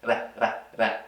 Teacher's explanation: And so this word has that flap T. Essa palavra contém esse flap T quando a língua está tocando o céu da boca.